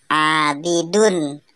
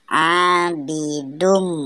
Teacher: Harokat tanwin dileburkan sehingga mim seolah-olah bertasdid. Cara membacanya tidak lagi menjadi abidun tetapi abidum. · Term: idgham bigunna